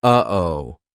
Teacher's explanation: that uh oh is a perfect example of how to use the glottal stop we aren't making the same mouth formation like we do for